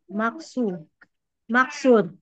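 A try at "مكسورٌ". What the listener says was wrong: Maksurun panjang su.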